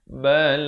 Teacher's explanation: Ghain makhrajnya di hujung kerongkong ini.